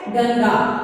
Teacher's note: अनुसार की ध्वनि नाक से निकलती है, वर्ण की शिरोरेखा पर बिंदु के रूप में इसे लगाया जाता है।